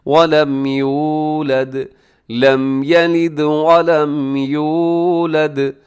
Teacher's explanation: لم یلد، لم یلد ولم یولد، وَلَمْ یولد، اسے یو کو لمبا کیجیے گا کیونکہ اس میں واو ہے، واو ساکن سے پہلے پیش ہو، واو مدہ ہوتی ہے، اسے کھینچ کے پڑھا جاتا ہے، لمبا کیا جاتا ہے